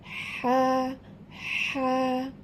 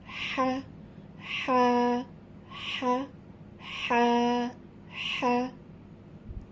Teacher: এই কণ্ঠনালীর মধ্যভাগ হইতে হা উচ্চারিত হবে, একটু হালকা চেপে উচ্চারণ করতে হবে।